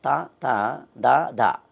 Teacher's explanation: త ద అన్నప్పుడు నాలుకని దంతాన్ని తగులుతాం కాబట్టి దంత్యాలు అన్నారు